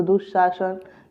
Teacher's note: सिर्फ विसर्ग का तालव्य श हो जाएगा।